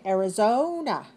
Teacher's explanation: 4 syllables. Stress the third.